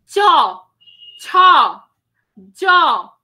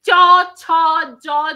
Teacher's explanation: এখানে একটা ঘর্ষণ হচ্ছে চ ছ জ যতই তালব ব্যঞ্জন হোক এগুলো উচ্চারণের সময় একটা ঘর্ষণ দেখা যাচ্ছে এইজন্য এগুলোকে বলা হয় ঘৃষ্ট ব্যঞ্জন ধ্বনি বা ঘর্ষণ হচ্ছে যে